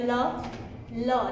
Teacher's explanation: ल देखो जीभ ऊपर वाले दांतों के पास जा रही है ल, देखो जा रही है ना, ल दांत के साथ लग रही है तो इसका भी दंतमूल ही होगा। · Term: पार्श्विक व्यंजन